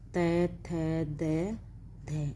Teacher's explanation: देखिए त, थ, द, ध, इन वर्णों के उच्चारण में जिह्वा की जो नोक है, जब हम बोलते हैं जो दांतों से टकरा जाती है, आगे जीभ हमारे दांतों से पर लगती है तो क्या होता है दंत। जिह्वा की नोक ऊपर के दांतों की जड़ मूल को स्पर्श करती है, ठीक है। जो हम बोलते हैं तब इन व्यंजनों का जब हम उच्चारण करते हैं तो हमारी जो जिह्वा, जो हमारे आगे दांत हैं, आगे से क्या उनको स्पर्श करती है।